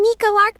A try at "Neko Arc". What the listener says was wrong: First of all, it's pronounced Neko Arc, not Nico Arc.